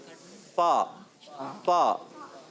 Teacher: اوپر کے دانتوں کا کنارہ جب نچلے والے ہونٹ کے تر حصے سے لگتا ہے تو ادا ہوتا ہے فا